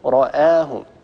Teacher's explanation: الهمزة من حروف الاستفال، حروف الاستعلاء فقط خص ضغط قض، الهمزة لا تفخمها العرب أبدا